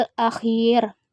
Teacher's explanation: Hai al-akhir hukumnya mad badal karena huruf mad bertemu Hamzah dalam suatu kata akan tetapi posisi Hamzah lebih dahulu dari huruf mad cara membacanya panjang dua harakat